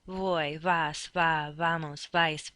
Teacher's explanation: your lips barely touch each other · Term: soft be